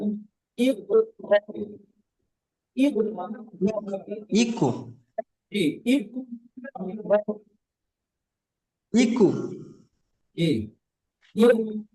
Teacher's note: এই সাকিন ওয়ালা হামজাকে ধাক্কা দিয়ে ঝটকা দিয়ে উচ্চারণ করতে হয়।